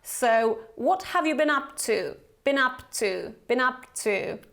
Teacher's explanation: because you actually link the consonant, spółgłoska, with a vowel, samogłoska.